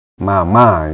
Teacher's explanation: wajib kita tahu yang pertama itu adalah nada pertama first tone first tone ini adalah garis dia seperti jalur garis datar aja